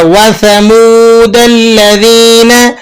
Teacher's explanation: وَثَمُودَ الَّذِينَ, وَثَمُو تو سا ہے اور میم واو پیش منہ ہے, واو مدہ ہے, ایک الف تک کھینچ لیں گے